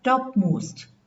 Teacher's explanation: the plosive is not pronounced in the usual way. So the plosives are nasalized. The air escapes through the nose. When a plosive is followed by a nasal sound. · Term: Nasal plosion